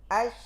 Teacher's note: Ketika sukun shin, ya, alirkan secara sempurna tafasyinya.